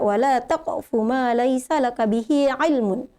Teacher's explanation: Jadi dia termasuk hukum qalqalah. Jadi qalqalah sugra karena hurufnya berada di tengah kata, jadi tidak usah dipantul dengan keras